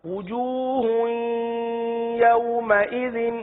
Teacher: جی ہا پر دو پیش کی تنوین ہے، اس ہا کو یا کے ساتھ اس طرح مدغم کر لیجئے کہ غنے کی آواز آئے